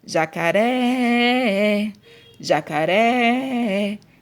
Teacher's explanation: Então, aqui, ó, o ré, a última sílaba aqui foi a mais forte. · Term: sílaba tônica